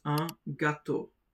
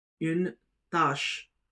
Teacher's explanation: When the circumflex accent is used on the letter A, the sound is the same, but it's a bit stretched.